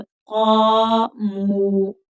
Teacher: मीम के ऊपर पेश और आगे वाव साकिन है तो वाव मद्दा, तो इसको भी थोड़ा खींच कर पढ़ेंगे